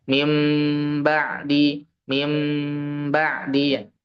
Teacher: Selanjutnya adalah iqlab, yaitu apabila nun sukun atau bertemu dengan ba satu doang hurufnya. Nah, maka nun dibaca seperti membaca huruf mim seperti diganti dengan huruf mim sukun